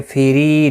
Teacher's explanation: فیری، ری یا مدہ ہے، 1 الف کی مقدار کے برابر کھینچ کر پڑھیں گے. را زیر کی وجہ سے باریک پڑھا جائے گا